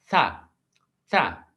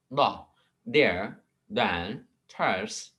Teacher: these sounds are formed with द tongue tip behind द upper front teeth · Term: डेंटल्स